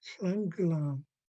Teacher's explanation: after the HL, you have to immediately switch into blowing air from the back of the throat and capturing a high tone mark on the A as well. Sangulam. And when we have HL followed by another HL, it's just one HL sound.